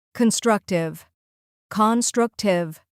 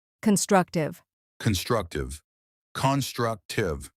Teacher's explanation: Three syllables. Stress on the second part